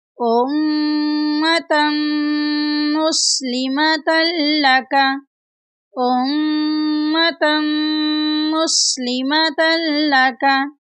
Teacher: यहाँ पर मीम शदीद है, मीम शदीद पर गुन्ना करेंगे।